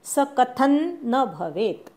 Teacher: थ वरच्या अनुस्वाराचा न उच्चार करायचा अर्धा